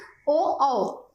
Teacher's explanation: फिर देखिए ओ औ, ये भी हमारे 2 स्वर हैं ओ औ। तो ओ औ का उच्चारण कंठ ओष्ठ है